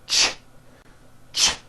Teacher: it's a combination of the T sound T and the sh sound sh when you put these two sounds together you get a ch ch it's an unvoiced sound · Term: CH sound